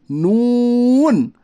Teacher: نون کا مخرج ہے زبان کا کنارہ ایک ناب سے لے کر دوسرے ناب کے دانتوں کے مسوڑوں سے ادا ہوتا ہے